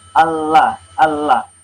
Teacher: Ini pada lam kita bisa melihat suara dari tengah lidah ini belok ke samping kanan dan samping kiri lidah. Jadi dari suara itu dari tengah lidah kemudian belok ke samping kanan dan samping kiri lidah. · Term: inhiraf